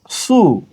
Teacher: সদ পেশ সু গোল করে মোটা করে